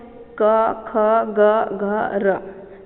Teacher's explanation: जब हम क वर्ण का उच्चारण करते हैं तो कंठ का स्पर्श होता है